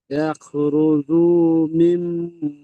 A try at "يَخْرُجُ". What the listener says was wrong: আচ্ছা, রুজু বা জিম একটু টান হয়ে যাচ্ছে, জিমের উপরে পেশ আছে, টান হবে না। রুজু।